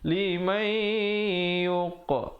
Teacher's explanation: ada pantulan di situ, khalkhalah sughra, qaf diberikan lantunan